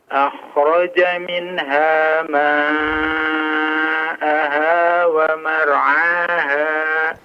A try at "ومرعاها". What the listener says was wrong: Mar'aha, ra-nya agak ditebalkan sedikit.